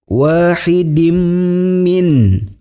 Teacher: ini adalah idgham bigunnah, ditahan dengan dengung ke hidung